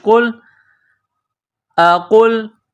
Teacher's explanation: یہ موٹا قاف ہے، بڑا قاف، اس کو موٹا کرنا ہے۔